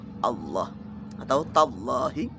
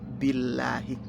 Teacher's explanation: kalau kalau jatuh setelah kasrah berarti tipis